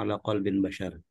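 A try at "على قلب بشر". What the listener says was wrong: Tidak boleh dibaca ala qalbin bashar. Ala qalbi bashar. Karena dia mudhof, Bapak.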